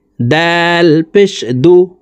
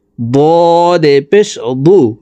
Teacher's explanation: দাল পাতলা ভাবে উচ্চারণ হবে দ মোটা করে উচ্চারণ করে পড়তে হবে